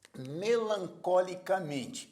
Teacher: a penúltima sílaba é mais forte por isso é uma palavra paroxítona · sílaba tônica original era có portanto a sílaba subtônica é có mem é a sílaba tônica de melancolicamente e có é a sílaba subtônica